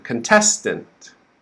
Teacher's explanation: the stress is not in the beginning it's on the second syllable so the first syllable is quick